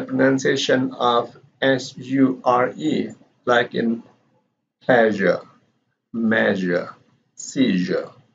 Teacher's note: the sound is accommodated with the vibration of the vocal cord because this is a voice consonant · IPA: /ʒ/